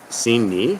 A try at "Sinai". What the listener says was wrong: Sini is how they pronounce it here. It's Sinai.